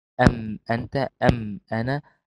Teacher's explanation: يسمى إظهارا شفويا لخروج الميم من الشفتين